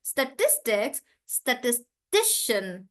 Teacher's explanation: So we have to read it like statistics. So I'm stressing on tis.